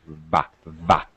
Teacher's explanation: be careful of your V's. Top teeth, bottom lip.